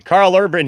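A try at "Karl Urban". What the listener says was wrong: It's Curl Urban, not Carl Urban.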